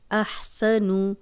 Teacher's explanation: نون کی پیش کو لمبا ہونے سے ہم بچائیں گے